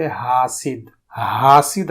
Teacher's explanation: عام طور پر حاسد کو ہا یعنی دو چشمی ہا کے ساتھ حاسد، حاسد ادا کرتے ہیں